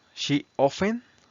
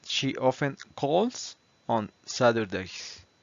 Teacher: Recuerden que este la t no se pronuncia